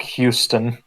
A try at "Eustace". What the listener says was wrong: It's not Houston. It's Eustace, like Eugene. Eustace. Yeah, Eustace.